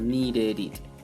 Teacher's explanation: como comienza vocal pues tenemos que unir